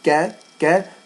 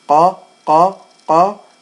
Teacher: You'll notice that if you're saying it correctly, the kaf is a little higher than the qaf.